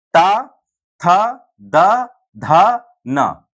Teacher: ये जिह्वा जो है वो कहाँ हर बार टकराएगी? दंत पे, यानी दांतों पे टकराएगी।